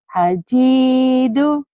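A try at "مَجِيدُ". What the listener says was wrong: terbalik. Ini mim dulu Bu. Mim Majidu.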